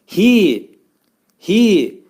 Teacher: bu hərfin məxrəci boğazın axırındadır. Aşağı hissəsindədir.